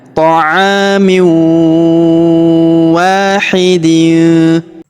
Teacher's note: Perhatikan huruf wa kita panjangkan 2 harokat karena terdapat alif di depannya.